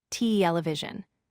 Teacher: Television has stress on the first syllable, television.